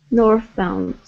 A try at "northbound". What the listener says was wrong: Okay, give me a good TH sound. North. Northbound.